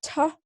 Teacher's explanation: So when you say t, your tongue comes up and touches the either, depending on sort of how you speak, the sort of size of your tongue, that sort of thing. It either touches the back of your teeth, or it touches what we call the alveolar ridge, which is the hard part just behind your teeth. And that tapping stops the airflow.